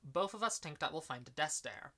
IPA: boʊf əv əs tiŋk dæt wɪl faɪn də dɛs deɪɹ